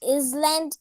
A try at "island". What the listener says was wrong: not Island, S is silent.